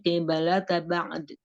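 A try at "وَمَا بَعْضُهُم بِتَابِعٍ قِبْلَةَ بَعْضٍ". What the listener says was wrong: Itu ba'duhum pakai dot. Ba'du kurang istilah sedikit biar nggak sama-sama huruf jadi kayak huruf dal gitu. Ba'duhum. Jadi ada istitolahnya. Hamzahnya jangan jadi kayak keseret gitu,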